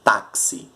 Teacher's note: porque o x tem som de ks